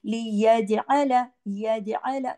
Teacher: जीम पे कलकला होगा।